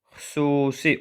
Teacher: Xüsusi burada xüsusi u uzanır. U qalın saitdir. İnci sayitin uzanması burda yoxdur.